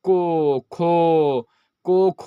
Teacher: जो कंठ से उच्चारण होता है, जिसमें जीभ ऊपर नीचे नहीं होता है